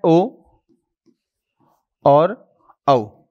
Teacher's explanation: ओ और औ इन दोनों का जो उच्चारण स्थल है वह कहां से होता है? वह होता है कंठ प्लस औष्ट से। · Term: कंठोस्टम